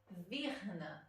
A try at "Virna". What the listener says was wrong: Virna. So you don't pronounce the R, right? That's not an R, babe. Nah. Verna is a var is a R for us.